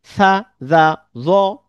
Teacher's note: জিহ্বার আগা সামনের উপরের দাঁতের আগার সাথে লেগে।